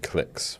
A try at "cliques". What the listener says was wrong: Not click as in clickbait. You had an American clique. It put you into American mode.